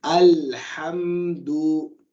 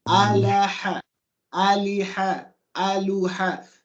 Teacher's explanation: There's no vowel sound separating the lam from the ha. You go straight from the lam to the ha. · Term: sukoon